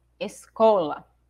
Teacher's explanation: a sílaba cole eu falo mais forte